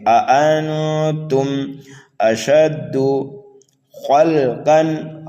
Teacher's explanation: خا کو پر کر کے پڑھنا ہے، قاف کو بھی پر پڑھنا ہے